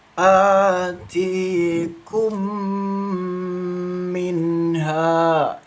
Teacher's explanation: Jadi didengungkan membacanya dua ketukan ya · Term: idgham mimi